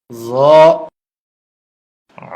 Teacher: জিহ্বার আগা উপরের দাঁতের আগায় লাগবে, নরম হবে, মোটা হবে।